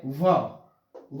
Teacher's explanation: व एकमात्र ऐसा वर्ण है जो दांत और ओष्ठ की सहायता से बोला जाता है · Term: दंतोष्ठम